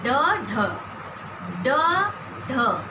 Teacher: हमारी जीभ पहले कैसे मूर्धा को स्पर्श कर रही है, उसके बाद फिर झटके से नीचे आ रही है। अतः इसका उदाहरण समझ लीजिए ड, ढ, ये उच्छिप्त व्यंजन है।